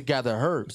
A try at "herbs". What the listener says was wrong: Gather herbs. That H is silent, y'all. Herbs.